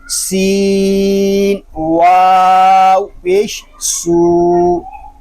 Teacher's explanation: سین یہ حروف صفیریہ میں سے ہے، سین کو ادا کرتے وقت سیٹی کی سی آواز نکلے گی